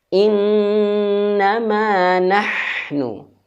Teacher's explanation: Nahnu nafasnya, anginnya halus.